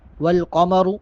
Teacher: قاف اور را دونوں کو پڑ کر کے یعنی موٹا کر کے ادا کریں گے۔